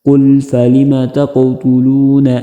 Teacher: لام پہ قلقلہ نہیں کرنا، قاف پہ کرنا ہے